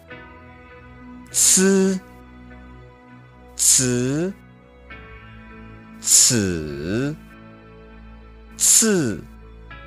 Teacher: Then you flatten your tongue horizontally and raise the tip of your tongue into the roof of your mouth just behind your top row of teeth, maybe about 1/4 inch behind them, making sure to just barely let the tip of your tongue touch the roof of your mouth so that air can actually escape.